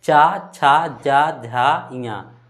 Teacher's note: ऊपर का भाग में यानी तालु। तो च का उच्चारण स्थान क्या है? तालु।